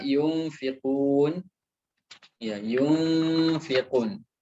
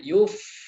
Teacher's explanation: Jangan perjelas huruf nunnya dan jangan juga langsung masuk kepada makhraj huruf setelahnya. · Jadi perhatikan ketika membaca ikhfa, jadi nunnya tidak terbaca, bukan yun, ya, nunnya disamarkan, ya, disembunyikan, seakan-akan nunnya itu disembunyikan atau disamarkan, dan dia juga tidak langsung masuk kepada huruf setelahnya, yuf, tidak, tapi yunfiqun, ya, jadi lidahnya itu atau jangan langsung berpindah ke makhraj huruf setelahnya.